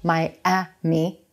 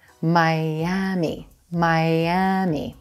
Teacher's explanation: the E is in green vowel it's very quick now notice there's a hidden Y sound at the beginning of that second syllable as we Glide between vowels